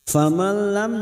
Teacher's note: nun sukun bertemu lam idgham bila gunnah masuk pada huruf lam tanpa mendengung